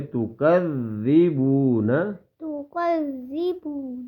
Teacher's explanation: تو کو نہیں کھینچیں گے بیٹا، فوراً پڑھیں گے